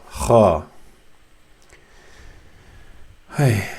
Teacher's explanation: you use the throat muscles to close a bit, to restrict the sound from coming out, making it Ha, as you would do.